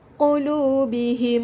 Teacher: berlaku apabila mim mati bertemu dengan huruf mim yang berbaris makhluk cara bacanya penuh didengungkan dengan kadar dua harokat saja · Okey, seterusnya tajuk lain yang terdapat dalam ayat ini ialah pada kalimat yang pertamanya ialah itu tajwid idgham mislain saghir. Okey, idgham mislain saghir ni iaitu berlaku apabila mim mati bertemu dengan huruf mim yang berbaris. Maka cara bacaannya perlu didengungkan dengan kadar 2 harakat sahaja, iaitu seperti qulubihim ma.